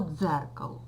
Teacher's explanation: в слові дзеркало дзвінкими є звук ДЗ зверніть увагу він один